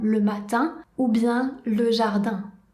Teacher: Pour prononcer correctement le son IN, la bouche prend la même forme que pour prononcer le son I et ensuite le son devient nasal. Et on garde bien la langue à plat dans la bouche.